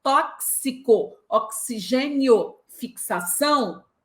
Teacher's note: Já o dífono é uma letra que produz dois fonemas, exatamente dois. O dífono existe porque a letra X emite um som de KS, ou seja, dois sons para uma mesma letra.